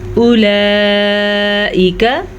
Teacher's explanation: मत को खींच के पढ़ेंगे। इस मत की मिक़दार तकरीबन 5 हरकत अरबिया है तो हम इसको 4 से 5 सेकंड तक खींच के पढ़ेंगे।